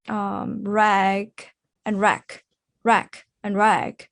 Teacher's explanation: Rag and rack rack and rack which one is longer right rag is longer because it's voice G sound